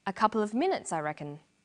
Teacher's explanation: The falling tone at the end tells the listener that the statement is finished.